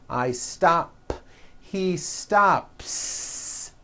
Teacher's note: I stop ends with an unvoiced p